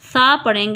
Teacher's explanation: अब हमने सा को अदा करते वक्त सीटी की आवाज़ नहीं लानी, हमने इसको नरमी से पढ़ना है।